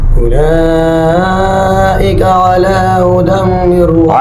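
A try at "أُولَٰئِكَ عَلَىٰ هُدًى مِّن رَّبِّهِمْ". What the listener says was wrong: अला हुदम, हाँ के ऊपर पेश वाज़ेह करो। हुदम,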